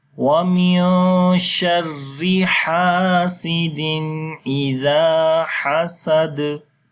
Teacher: Before the alif there is fatha sign. On the dal we make qalqala.